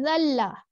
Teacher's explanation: زال جو ہے وہ ہمارا نرم حرف ہے. ٹھیک ہے. اس میں سیٹی کی آواز نہیں آتی